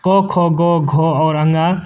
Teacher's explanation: घ व्यंजन वर्ण का उच्चारण स्थान जो है वह कंठ होता है, क्योंकि घ जो है क वर्ग के अंतर्गत आता है, यानी कि क, ख, ग, घ और अंगा। और क वर्ग का जो उच्चारण स्थान है वह कंठ होता है